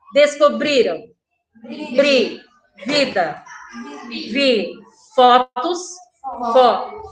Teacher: todas essas palavras, a penúltima sílaba foi a sílaba tônica. Foi a mais forte